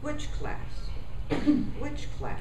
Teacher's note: I start high and my pitch reaches the bottom of my voice